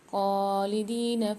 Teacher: خالدین میں خاء کے اوپر کھڑا زبر ہے، دال کے ساتھ یہ ساکن ہے، دونوں کو ایک ایک الف میں دار کھینچ کے پڑھیں گے۔ فیہا میں فا کے ساتھ یہ ساکن ہے، ہا کے ساتھ الف ہے، یہاں بھی ایک ایک الف میں دار کھینچیں گے۔